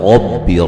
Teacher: قالت، قاف کو موٹا ادا کریں گے، الف مدہ ہے، لت تا کو ہلانا نہیں ہے، ربی را کو موٹا ادا کریں گے، را کو با سے سختی سے ملائیں گے